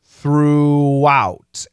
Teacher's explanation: throughout it's a long double O throughout and then an ow diphthong